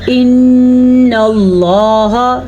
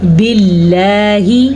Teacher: لفظ اللہ سے پیچھے زیر آ گئی تو پھر لفظ اللہ ہم باریک پڑھیں گے